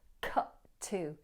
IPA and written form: kʌʔ tə (cut to)